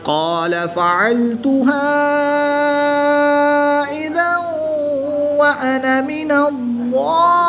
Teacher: الف مدہ کے بعد حمزہ دوسرے کلمے میں ہے تو یہاں پر مد منفصل ہوگی، 2 سے 3 الف تک کھینچ کر پڑھیں گے۔ 2 زبر کی تنوین کے بعد واو حرف یرملون میں سے ہے تو یہاں پر ادغام مع الغنہ ہوگا، یہاں پر غنہ کر کے پڑھیں گے۔